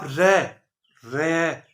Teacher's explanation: आप रे, रे बोल के देखिए, जो आपकी जीभ है उसके अंदर एक वाइब्रेशन आएगा, एक कंपन आएगा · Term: प्रकंपित व्यंजन